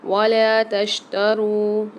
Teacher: لام کے ساتھ الف مد آ رہا ہے، اس کو ایک الف مدار کھینچیں گے